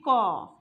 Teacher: ধর আমি বলছি ক, দেখো ক যখন উচ্চারণ করব তখন কিন্তু আমার অটোমেটিক দেখো কয়ের সাউন্ড শেষে দেখবে ও আসছে।